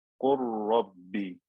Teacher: the lam is very similar to the ra, and it has sukoon, so I merged it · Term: idgham